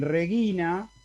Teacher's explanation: en la antepenúltima cuando cae en la penúltima cuando es larga en regina como la y es larga el acento cae ahí